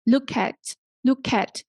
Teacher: you need to link k and a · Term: Word linking